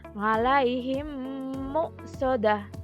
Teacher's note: Hukum bacaan idgham mimi apabila huruf mim sukun bertemu dengan mim. Cara membacanya adalah memasukkan huruf mim ke dalam huruf mim disertai dengan suara guna sekitar 2 ketukan atau harokat.